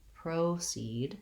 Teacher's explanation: the O actually says the O diphthong in American English.